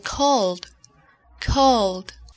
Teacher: Cuando el verbo termina en sonido vibrado, es decir, cuando al pronunciar la última letra sientes que el sonido vibra en tu garganta, entonces para pronunciar el pasado en ed se utiliza el sonido vibrado d